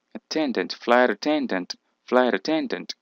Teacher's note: dos acentuaciones fuertes dos entonaciones fuertes uno en flight y el otro en ten · la T está entre la vocal I y la vocal A. Y entonces por eso se pronuncia la T como una R y se pega flight attendant.